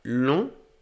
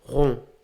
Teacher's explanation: Y entonces en este caso sí los estiramos. La boca está mucho más cerrada y los labios también. Y como ven aquí, los labios se contraen. Pero la lengua termina estando en la parte de atrás. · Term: vocal nasal